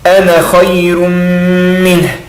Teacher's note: Reparem que tem o alif, mas eu não pronuncio o alif, porque eu estou juntando.